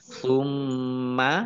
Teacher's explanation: mim tasdid dibaca gunah atau mendengung ditahan dua harakat